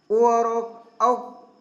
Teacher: तो हम सब जानते हैं ओ का जो उच्चारण स्थान है वो कंठ और ओष्ठ, यानी कंठ और ओष्ठ दोनों से है। ओ और औ ये दोनों कंठ ओष्ठ हैं